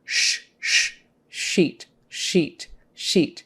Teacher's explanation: the top of your mouth than SSS is behind the teeth sh is a little farther back in your mouth and not quite touching and more air comes out at once sheet sheet sheet just make sure you get your tongue back